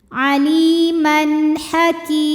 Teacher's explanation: Kemudian ada hukum izhar halqi sebab ada tanwin fathah yang menghadapi huruf halqi atau huruf tenggorokan yaitu ha, maka tanwin kita bunyikan dengan jelas